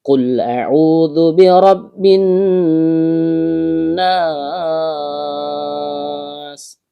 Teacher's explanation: Huruf qof adalah huruf yang keluar dari pangkal lidah naik ke langit-langit di atasnya.